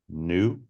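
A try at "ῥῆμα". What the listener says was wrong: Not new, not in this case. Yeah, yeah, yeah, upsilon. Yeah, the font's a little funky. There's a new over here as opposed to this.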